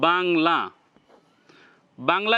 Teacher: তখন তার উচ্চারণটা নাক দিয়ে বের হবে এতটুক মাথায় রাখতে হবে আপনি যখন বাংলা বলবেন তখন নাক ধরে উচ্চারণ করবেন দেখবেন যে আওয়াজটা নাকে গেছে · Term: অনুস্বার